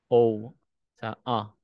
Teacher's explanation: Parang salitang A pero between ng A at saka O. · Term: kamats katan